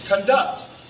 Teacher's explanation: if you want to use it as a verb, notice how the emphasis or the stress goes on the second syllable.